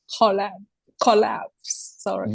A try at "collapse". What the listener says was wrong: Yes, that's better.